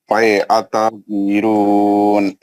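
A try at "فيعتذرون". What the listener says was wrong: عین کا آواز کون نکالیں گے؟ فیعتذرون.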